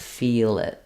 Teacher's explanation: if you're linking something like feel it. You can then just think about doing an L, a light L at the start.